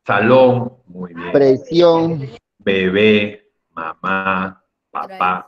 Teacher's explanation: la última sílaba era más fuerte al momento de pronunciarse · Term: palabra aguda